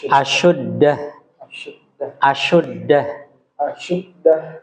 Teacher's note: huruf syin itu Usahakan dia ada tapasyinya ada semburan udara